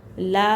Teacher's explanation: ला एक अलिफ की मक़दार खींचेंगे